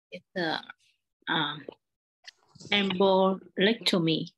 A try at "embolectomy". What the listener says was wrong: Good. Good. Embolectomy. Yeah, you pay attention to it.